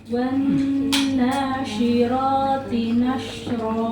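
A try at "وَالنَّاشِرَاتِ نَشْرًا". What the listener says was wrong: Ro masih kurang tebal.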